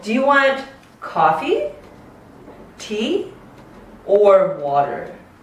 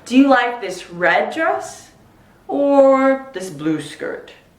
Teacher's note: The last option always goes down. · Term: choice questions